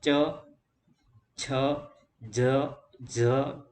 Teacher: તો તાલવ્ય વ્યંજન કોને કહેવાય? તો કે જે વ્યંજનોનો ઉચ્ચારણ કરતી વખતે જીભની આગળનો ભાગ તાળવાને સ્પર્શે